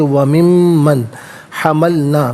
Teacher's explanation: نون ساکن ہے، اس کے بعد میم آ رہا ہے تو نون ساکن کو میم کے ساتھ ملا کر میم کی آواز کو کھولنے کے ساتھ ادا کریں گے۔ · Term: یرملون کا قاعدہ